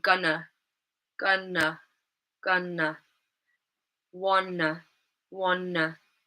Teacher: So in these examples, the last syllable is unstressed, and we use a schwa sound. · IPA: /ə/